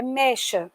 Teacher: A palavra mecha não é mexa, o é aberto, é mecha